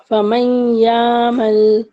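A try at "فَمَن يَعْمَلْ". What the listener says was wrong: हाँ, गुन्ना थोड़ा सा और करें, 2 काउंट। हाँ, थोड़ा और रुकना।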